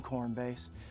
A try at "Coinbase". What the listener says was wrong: So it's, you keep saying Cornbase. not that. It's called Coinbase. And, you know, that's what you just got to say because that's what it's called.